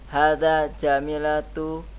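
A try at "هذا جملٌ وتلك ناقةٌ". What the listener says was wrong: Kalau jamilatun ada ya-nya setelahnya. Setelah mim.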